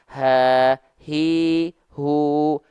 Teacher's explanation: hurufnya keluarnya dari sini dari pangkal tenggorokan dalam keadaan yang tertutup kalau pangkal tenggorokannya pita suaranya dalam keadaan yang terbuka itu H besar